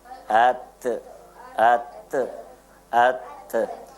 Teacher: tip of the tongue touches the root of the upper incisors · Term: dental letters